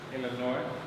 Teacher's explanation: the S isn't pronounced in Illinois